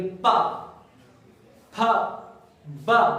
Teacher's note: आप बोल के देखेंगे प, फ, ब, तो बेटा ये तभी बोल पाएंगे जब आपके होठ से होठ मिलेंगे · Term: ओष्ठ